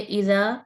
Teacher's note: کیونکہ یہ مد اصلی ہے. الف ساکن سے پہلے یعنی خالی الف سے پہلے زبر آ رہی ہے، تو یہ مد اصلی، اس کو دو حرکت پڑھیں گے